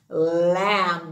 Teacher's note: the b is silent with the m